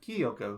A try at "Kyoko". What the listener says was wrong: I would pronounce that Kyoko. I think you need to spend less time on the key, emphasize that less, and just go like kind of breeze past it. Kyoko.